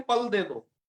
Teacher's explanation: पंजाबी लोग जो है प और फ में उनके अंतर नहीं है। उन्हें फल दे दो, फल को भी कहते हैं पल दे दो।